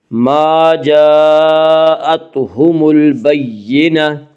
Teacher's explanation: ما جاءتهم البینہ، جاء میں مد متصل ہوگا، مد متصل وہ مد ہے جس میں حرف مد کے بعد حمزہ اسی لفظ میں ہے۔ مد متصل میں حفص کی روایت میں صرف توسط ہے، اور توسط کی مقدار 2 الف، 2.5 الف اور 4 الف ہے۔ ما جاءتهم البینہ، الف لام اگر حروف قمری کے شروع میں آئے تو صرف لام پڑھا جائے گا، الف کو نہ پڑھیں گے۔